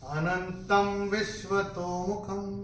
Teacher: अनुस्वार के बाद जब व होगा तो अनुस्वार के उच्चारण होगा म।